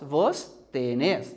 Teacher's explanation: é uma palavra aguda. A última sílaba tônica.